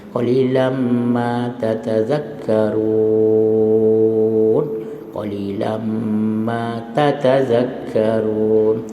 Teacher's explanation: Walal musii qalilam ma, idgham mal gunnah, tanwin bertemu dengan mim